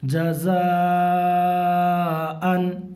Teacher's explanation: جیم کے اوپر زبر کی حرکت ہے، زبر کی حرکت کو تھوڑا بھی نہ کھینچیں، ٹھیک ہے، اور زبر کی آواز اوپر کو اٹھتی ہے